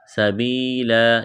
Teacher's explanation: وقف کریں گے، دو زبر کی تنوین کو الف سے تبدیل کرنا ہے